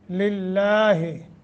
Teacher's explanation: लफ्ज़ अल्लाह को बारीक करके यानी तरकीक करके पढ़ेंगे।